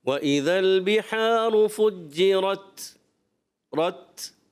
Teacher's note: وَإِذَا الْبِحَارُ فُجِّرَتْ، اچھا جب آپ تا کو اینڈ کرتے ہیں نا، تا، یہ تا جو ہے شدیدہ محموسہ حرف ہوتا ہے، یعنی سختی کے ساتھ آواز بند ہو جاتی ہے اور پستی اور نرمی کے ساتھ سانس جاری رہتا ہے